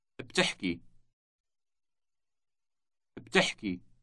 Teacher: The word has two consecutive consonants at the beginning, B and T.